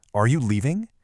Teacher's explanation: That little lift on the word leaving is absolutely everything. It's what turns a statement into a question. It's basically an open invitation for a yes or no answer, all thanks to that final musical note.